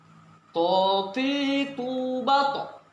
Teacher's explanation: To ada lembungan mulut kita, memang dia untuk menunjukkan tebal itu. Mulut kita menggelembung to, namun tidak ada disertai keluar nafas. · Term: huruf to